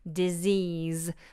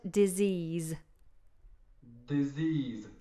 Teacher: We've got two Z sounds in it